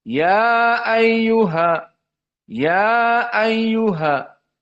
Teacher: Di sini hukumnya dibaca al-qasr karena mad jaiz munfasil. Maka hanya 2 harokat saja.